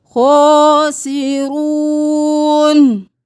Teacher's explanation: खौ को मोटा पढ़ेंगे, खड़ी ज़बर है तो खींचे